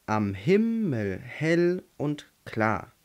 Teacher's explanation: und klar haben wir him hell und klar also sehen wir es ist immer eine unbetont und eine betont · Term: Jambus